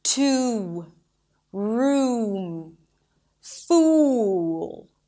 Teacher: So, it's it's as if I'm adding a 'w' sound at the end. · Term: the tense 'uw'